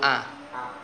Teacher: ketika huruf a ketika dipencet hidungnya harusnya tetap jalan a nggak pengaruh